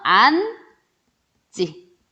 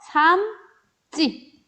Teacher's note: 지 예사 소리가 찌 된소리로 발음 났고요.